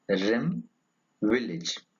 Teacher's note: It is a mid-high, front, lax vowel.